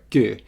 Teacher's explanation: That is K with an O with two dots over it, which is a front round mid vowel.